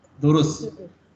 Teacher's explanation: दुरुस्त में ते को नहीं पढ़ते कन्वर्सेशनल पर्सन में